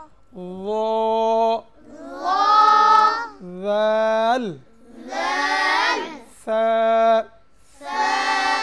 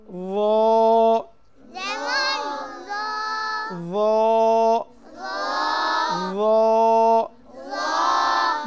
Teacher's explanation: জিহ্বার আগা সামনের উপরের, দুই দাঁতের আগার সঙ্গে লাগিয়ে, তিনটি হরফ উচ্চারিত হয়। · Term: 13 নম্বর মাখরাজ